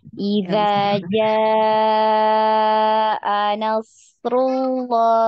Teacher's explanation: Nah, iya, di situ kan ada huruf mad ya. Idza ja itu 4 atau 5 harokat. Ya, patokannya huruf mad itu setelah huruf mad adalah huruf hamzah ya.